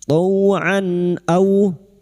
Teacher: maka bunyi fathah tanwin dibaca jelas tanpa mendengung